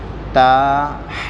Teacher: تا سامنے کے جو 2 دانت ہیں اس کی جڑوں سے تا ادا ہوں گی